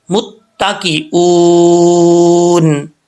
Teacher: آگے حمزہ ہے, حمزہ کے بعد واو آ رہا ہے, واو ساکن سے پہلے پیش تو واو مدہ ہوتا ہے. یہاں پہ واو مدہ ہے, ایک الف کی مقدار اس کو لمبا کریں گے